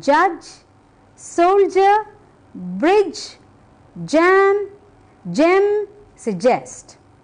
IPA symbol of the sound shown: dʒ